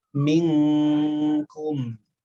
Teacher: suara ikhfa atau dengung pada hukum ikhfanya adalah langsung persiapan ke huruf kaf. Bukan minkum, tapi ming ya, ming langsung ke kaf.